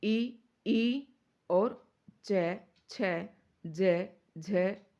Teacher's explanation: दूसरा स्थान जो आता है वो तालू का आता है और तालू से इ ई और आपका च वर्ग पूरा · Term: तालव्य